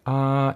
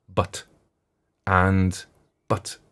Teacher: So, and I put but rather than and because I think but is, it's the stop, the stop. So a vowel goes, ah, it's continuant, but a stop has an ending to it